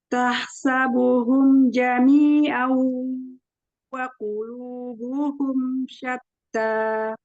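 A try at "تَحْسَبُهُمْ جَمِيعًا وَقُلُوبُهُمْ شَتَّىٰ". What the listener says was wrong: Al-ha mau tipiskan lagi.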